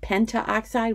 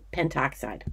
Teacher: sometimes when we have syllables that would bump up against each other instead of saying penta oxide we just go to pentoxide